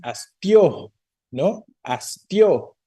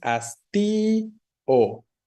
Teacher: la o se separa aquí de la i Por qué razón porque la i tiene fuerza no la i que es una vocal cerrada según la clasificación